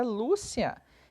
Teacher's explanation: a palavra Lúcia é a penúltima sílaba, então ela é paroxítona.